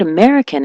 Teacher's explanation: the word American, as you know, is stressed on the me American. So, she was saying Americano.